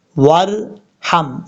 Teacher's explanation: زبر رب، با غین زیر بغ، رب بغ فر ورحم، ورحم، واو کو جب را سے ملائیں گے تو بیچ میں الف کو چھوڑ دیں گے